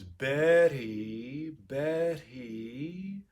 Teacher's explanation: i'm taking away the voicing in the middle of the word